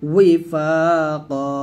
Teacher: ওয়াও জের ওয়ি দুই ঠোঁট থেকে